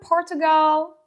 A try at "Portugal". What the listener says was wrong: The country is not pronounced Portugal. But in American English, the word is Portugal. We pronounce the T with the ch sound because we have TU. We usually do that. When you have TU in the middle of the sentence, we say ch, like nature and natural.